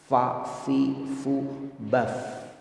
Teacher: Fa, fi, fu, baf, fathah, kasroh, doma, sukun, syiddah, tetap perut bibir bawah bertemu dengan gigi seri atas